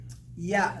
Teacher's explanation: the ya is the letter what's coming from the middle of the tongue